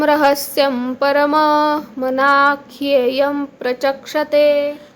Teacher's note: इथे सगळे अनुनासिक मकारांत घेतलेले आहेत